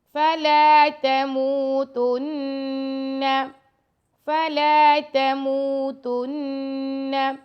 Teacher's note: میم کے ساتھ واو مدہ ہے تو میم کو 2 سیکنڈ تک لمبا کریں گے اور نون پر غنہ کریں گے۔ فَلَا تَمُوتُنَّ، اور نون کو لمبا نہیں کرنا، صرف غنہ ہی کرنا۔